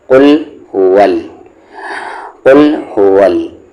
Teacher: او کو لام ملائیں گے قل، ہا پر پیش ہے ہو، و کو لام میں ول، قل ول۔ دھیان رکھے یہ قاف ہیوی ہے لیکن یہ لام ہیوی نہیں ہے